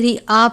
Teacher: رعاء الناسی، اس کو آپ نے ریا نہیں پڑھنا بلکہ رعا پڑھنا ہے کیونکہ حمزہ کی علامت ہے، یا کی آواز کے ساتھ نہیں پڑھنا